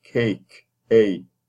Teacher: you definitely have the diphthongized A